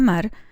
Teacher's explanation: el núcleo formado por la vocal A, el ataque formado por la nasal y la coda silábica formada por la vibrante simple